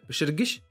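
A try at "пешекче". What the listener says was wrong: Пешекше. Я напомню, например, почему именно «щ», а не «гыщ», как ты предположил, да?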